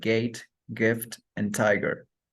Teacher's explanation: Next plosive sound is G, which is velar, plosive, and voiced. For the spelling G in words like gate, gift, and tiger.